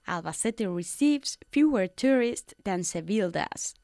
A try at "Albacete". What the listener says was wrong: Albacete, good, I liked your pronunciation.